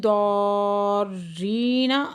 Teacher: مد لازم ہے یہاں پہ 5 سے 6 حرکت کھینچ کے پڑھیں گے ، ری پہ یا مدہ دو حرکت کھینچ کے پڑھیں گے،